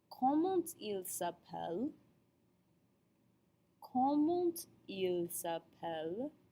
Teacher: Note the liaison between the comment and the il.